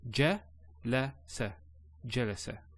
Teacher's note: no elongation of the a sound